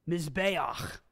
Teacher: So instead of cha, it's ach. The A sound comes first, then your guttural phlegm sound comes second.